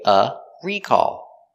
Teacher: The noun is recall with the stress on the first syllable. And it's countable, so we say a recall.